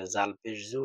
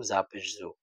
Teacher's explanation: জালটা নরম হবে, জিহ্বার আগা সামনের উপর দুই দাঁতের আগার সাথে লাগবে।